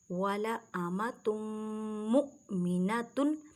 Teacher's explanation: دو زبر دو زیر دو پیش کو، اس کے بعد میم ہے اور میم حروف یرملون ادغام مع غنہ مینس کے گنہ کرنا ہے. حمزہ ساکن ہے اس وجہ سے اسے جھٹکا دے کے پڑھنا ہے